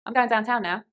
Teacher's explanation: the ow sound flattens and becomes wider